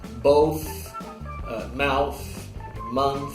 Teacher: O TH que é meramente um assopro, digamos assim, que é o caso, por exemplo, de both, mouth, month, ok?